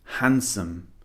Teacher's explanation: the D is actually silent we do not pronounce the D in this word